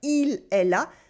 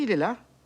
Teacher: we wouldn't cut the pronoun or even the L sound